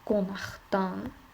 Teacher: samitlə başlayan şəkilçi söz gəldi yenə də xışlıq kimi tələffüz olunur